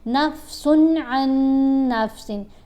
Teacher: تنوین ہے اور اس کے بعد حروف حلقی میں سے کوئی حرف آ رہا ہے, تو آپ نے غنہ ادا کیے بغیر پڑھنا ہوتا ہے. یعنی نفسن ان نفسن پڑھیں گے تو غلط ہو جائے گا.